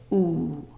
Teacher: pronounced as a long o so you bring your lips together